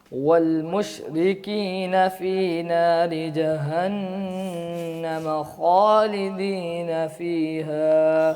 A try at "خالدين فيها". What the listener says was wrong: خالدین کا جو خواہ ہے اس کو تھوڑا سا موٹا کریں. دیکھیں یہ اس کو زیادہ کھینچنا نہیں.